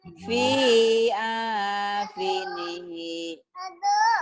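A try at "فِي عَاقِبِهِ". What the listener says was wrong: Ini ain dan kop. Fi akibihi, Bu. Mungkin gak kelihatannya. Fi akibi. Pendek semua. Fi akibihi.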